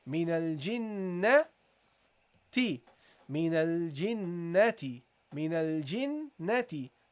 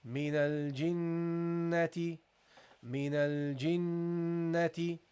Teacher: We give this a sound from the nasal area, okay, which is called al-ghunna, okay? So we give it and we hold it.